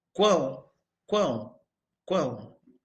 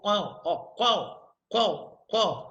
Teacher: ar sai pela boca e parte desse ar sai pelo nariz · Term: tritongo nasal